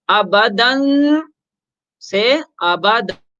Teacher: ابدا، یعنی کہ الف سے بدل دیتے ہیں، تو 2 زبر ہے لیکن وقفن یہاں سانس لینے کی وجہ سے، وقف کرنے کی وجہ سے 2 زبر کو ختم کر کے اس کی جگہ الف پڑھ لیں گے